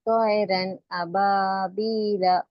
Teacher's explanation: تو نون کی آواز کو ظاہر کر کے بلا غنہ کے جلد پڑھیں گے. اس کو اظہار کہتے ہیں.